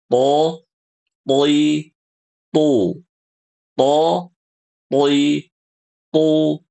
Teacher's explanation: Huruf th, Ibu-ibu lihat di sini huruf th pangkal lidahnya naik. Nah, sehingga huruf th ini hurufnya tebal.